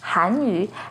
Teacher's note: has a second rising tone on han